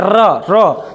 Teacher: तो जीवा बहुत झंझनाहट के साथ कंपन करती है, आगे से मुड़ भी जाती है, इसीलिए इसको लुंठित, आपको प्रकंपित, ये सारे वर्ण से के नाम से जानते हैं इसको। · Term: प्रकंपित वर्ण